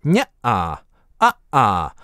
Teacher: glottal stop это то, что звучит межу гласными, когда вы говорите не-а, a-а. Кстати "a-а" это единственное слово в русском, где вы изолированно произносите звук шва под ударением, впрочем, более точно это назализированное шва, чисто было бы [əʔə]. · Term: гортанная смычка